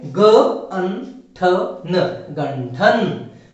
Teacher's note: ठ यह ट वर्ग का दूसरा व्यंजन है और ट वर्ग का व्यंजन होने के कारण अनुस्वार का उच्चारण कैसे होगा, अनुस्वार का उच्चारण होगा अन की तरह। तो इसीलिए इसका उच्चारण बनता है ग अन ठ न, गंठन।